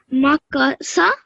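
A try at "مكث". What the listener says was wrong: So this sa sound is bit different from seen sound. So this one is like, this sound is like th sound in English, like we say thank you. So it is sa sound. Sa. Sa.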